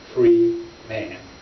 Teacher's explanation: He pronounced the syllables separately, distinctly, stopping between them, making them a statement in themselves.